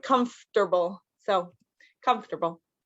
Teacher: But comfortable, it looks like comfort-able, but it's comfortable. So we kind of get rid of this O in the middle, and it's just like comfortable.